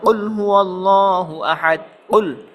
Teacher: জিহ্বার গোড়া তার বরাবর উপরে তালের সঙ্গে লাগাইয়া দুই নক্তাওয়ালা কফ